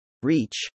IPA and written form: r-iː-tʃ (reach)